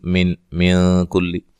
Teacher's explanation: من کل نون ساکن کا یہاں اخفا مع الغنہ ہے. کلی کاف کو باریک، لام کو باریک.